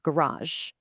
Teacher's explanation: In Britain, you'd almost always hear the emphasis right at the beginning, garage. You hear that? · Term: word stress